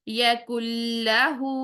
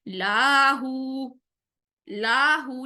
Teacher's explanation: पर लाम के ऊपर जबर है तो सिर्फ वन काउंट रखेंगे लाम की जबर को वन काउंट से लंबा नहीं करेंगे इसको मध्य असली नहीं बनाएंगे लाहु से मीनिंग चेंज हो जाएगा